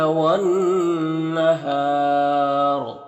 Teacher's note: یہاں پر الف لام حروف شمسی نون کے شروع میں تو الف لام دونوں کو نہیں پڑھیں گے، نون میں غنہ ہوگا. اور یہاں پر وقف کریں گے تو را کو پر پڑھیں گے اور مد عارض وقفی ہوگا تو اس طرح سے پڑھیں گے.